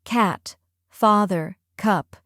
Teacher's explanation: the A in cat is wide and bright. The A in father is open and relaxed. The U in cup is short and centered.